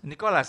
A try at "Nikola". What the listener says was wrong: Nikola enggak pakai S.